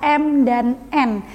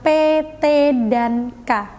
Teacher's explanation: bunyi nasal akan mengalirkan udara melalui hidung sedangkan bunyi oral aliran udara atkan mulut secara konkret contoh bunyi